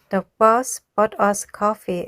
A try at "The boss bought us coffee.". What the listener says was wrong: 이거는 발음의 문제라기보다도 지금 소리도 충분히 좋으시지만 덩어리로 말해야 돼요. 이게 아니라 사장님이 우리에게 커피 사줬어 라고 빠르게 말하라는 게 아니라 덩어리로 말하는 게 훨씬 더 중요해요. 하나하나 디테일하게 발음이 더 좋아지는 것보다는.